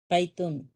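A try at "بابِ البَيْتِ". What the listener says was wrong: بابل بیتی، بابل بیتی، بیتی. اس کے اندر یہاں پر زیر آنا ضروری ہے. بیتو نہیں، بیت نہیں، بیتا نہیں، بابل بیتی.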